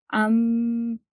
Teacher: नून मीम से मिल जाता है पढ़ते वक्त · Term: गुन्ना